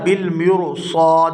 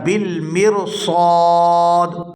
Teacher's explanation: یہاں پر ہم اس کو بالمرصاد اس طرح سے ادا نہیں کریں گے، بلکہ یہاں پر را کو باریک ادا کریں گے کیونکہ را ساکن ہے اور اس سے پہلے زیر ہے، اور اس کو اس طرح سے ادا کیا جائے گا بالمرصاد۔